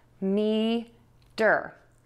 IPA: midər